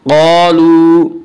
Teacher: क़ालू अलिफ मद्दा, अलिफ हमेशा मद्दा होता है, अलिफ से पहले ज़बर होता है, अलिफ मद्दा को एक अलिफ के बराबर खींच कर पढ़ेंगे। क़ालू वाव मद्दा, वाव मद्दा वो वाव जो साकिन उससे पहले पेश हो, वाव मद्दा को एक अलिफ के बराबर खींच कर पढ़ेंगे।